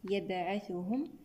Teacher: هنا الباء ساكنة شديدة نفك شدتها بالقلقلة